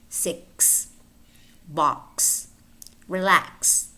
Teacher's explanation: We might also have s spelled x, in which case it's pronounced k, s.